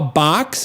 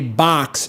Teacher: a box I'm like oh yeah I'm from the Midwest that's we say ah instead of O